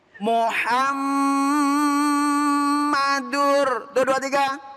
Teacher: Nah, kalau ada mim bertasdid harus dibaca Gunnah.